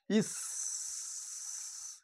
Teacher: শীষ ধ্বনিও বলা হয় যেহেতু একটা শীষের মত আওয়াজ হয়